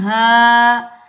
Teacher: یہ الف مدہ ہے. اس کو ہم ایک الف کی مقدار میں کھینچ کر ادا کریں گے